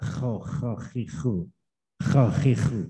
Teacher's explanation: Kho-nya tampilkan karena kho itu punya hak untuk dibaca serak.